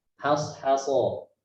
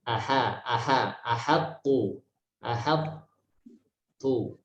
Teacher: Kita harus baca huruf H dengan jangan sampai ikut tebal walaupun berdampingan dengan huruf-huruf tebal. Has-haso. Jadi H tipis, so tebal, H tipis lagi, so tebal lagi.